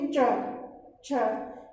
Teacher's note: च बोलते वक्त हमारी जो जिह्वा है वो हमारे मुख की छत को, मतलब हमारे तालु वाले भाग को स्पर्श करती है।